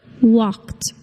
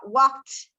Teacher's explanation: The T, very good. ed verb ending sounds like a t, walked, even though it ends in the letter D